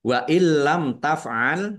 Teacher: nun sukun bertemu dengan huruf lam, bacaan idgham bila gunnah, masuk dengan tidak mendengung. Langsung masuk ke huruf lam.